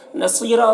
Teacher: صاد کو پر پڑھیں گے، یا مدہ ہے، ایک الف کے برابر کھینچیں گے، اور را کو پر پڑھیں گے